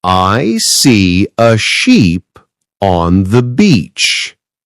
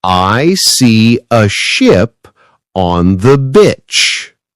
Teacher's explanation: In sheep, the vowel is long and smiling. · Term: long sound